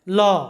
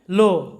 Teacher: কিন্তু ব্রিটিশ অ্যাকসেন্টে এটার উচ্চারণ হয় ও, এরকম, মানে ওকারের মতো ও, এরকম সাউন্ড হয়। অর্থাৎ আমেরিকানরা অ এরকম সাউন্ড করে এবং ব্রিটিশরা ও এরকম সাউন্ড করে। যেমন উদাহরণস্বরূপ দেখো LAW, ল, আমেরিকানরা বলে ল, আর ব্রিটিশরা এটাকে বলে লো। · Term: আমেরিকান অ্যাকসেন্টে